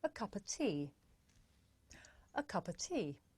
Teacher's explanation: The words a and of become schwa,